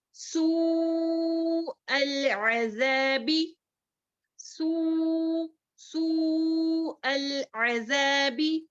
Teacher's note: سو میں کھینچیں گے 4 حرکات یا 5 حرکات کے برابر, العذابی 1 2 3 4 5, سوء العذابی, ہاں متصل جی, سوء العذابی 4 یا 5 حرکات کے برابر کھینچ کر لمبا کرنا ہے. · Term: مد واجب متصل